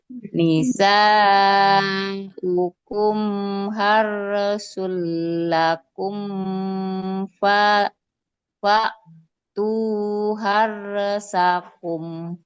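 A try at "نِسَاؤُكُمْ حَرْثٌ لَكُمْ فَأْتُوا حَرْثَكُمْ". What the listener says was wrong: Nah, tebalnya coba. Tu harsakum. Yang harlnya. Harsakum. Itu untuk huruf ro ya.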